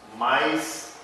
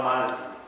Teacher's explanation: Substituição de vogal e glide por consoante e vogal, consoante e vogal.